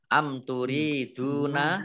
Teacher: mim sukun bertemu dengan huruf ta, bacaan izhar syafawi dibaca jelas.